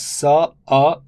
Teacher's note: the stress falls on the first syllable